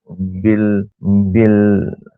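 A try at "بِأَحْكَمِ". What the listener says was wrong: বিল নয়, বি আহ, প্রথম বা তারপর হামজা, বিল নয়, বি আহ, বি আহ।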